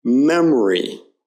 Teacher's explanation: say memory you hear that it's a very subtle sound and the O there isn't stressed it's more of an uh than anything